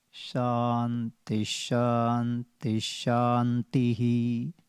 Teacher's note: Under the Tha, there is going down. Second Tha, you go down. And third Tha, you go up.